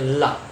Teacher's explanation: मुख से निकलने वाली हवा जिह्वा के दोनों पार्श्व भागों को स्पर्श करते हुए बाहर निकलती है। उन्हें पार्श्विक व्यंजन कहते हैं।